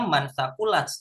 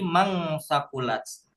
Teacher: Kalau dibaca biasa tanpa tajwid mungkin kan bacanya mansakulats, tapi kalau kita menggunakan tajwid sesuai ya, ini namanya ikhfa, menyamarkan, bacanya disamarkan nun matinya jadi mangsakulats.